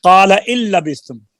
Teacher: یہاں پر نون کا لام میں ادغام ہوا ہے